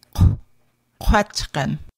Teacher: Glottal Q pronounced as a hard Q, k, khan. Q raised W pronounced Q with rounded lips